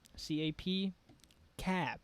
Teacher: In English, when we pronounce the P, we let the air out. But in Thai, we don't let the air out. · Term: P stop